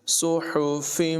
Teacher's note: ہا کی آواز حلق سے نکلے گی